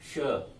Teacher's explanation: ये जो है स तालव्य, तालु से बोला जाता है।